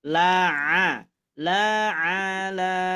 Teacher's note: Ainnya, huruf ain keluar dari tengah tenggorokan.